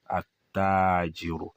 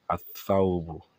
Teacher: This lam will not be pronounced. It's going to be embedded in the Harfu Shamsiya because the makhraj, ibi tí a ti ń pè wọ́n, they are very close. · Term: Hurufu Shamsiya